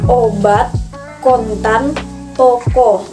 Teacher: Kemudian yang kelima adalah fonem O, adalah vokal sedang, belakang, bulat. Vokal ini dibentuk dengan kedua bibir agak maju ke depan dan agak membudar, serta belakang lidah agak meninggi, tetapi agak lebih rendah dari kurang bundar dari huruf U.